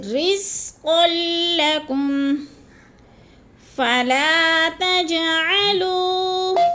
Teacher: تج جیم پر قلقلہ ہے، تھوڑا سا ہلا کر پڑھنا ہے، اور لو کو ہم نے تھوڑا سا کھینچنا ہے کیونکہ وہ مدہ ہے۔